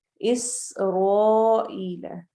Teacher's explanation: اس سین میں سیٹی کی آواز ہوگی، رو فتحہ کی وجہ سے ہم اس کو ہیوی پڑھیں گے.